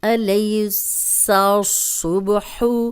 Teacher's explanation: سین کو باریک پڑھیں گے، صاد کو دونوں بار موٹا پڑھیں گے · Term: ملتے جلتے حروف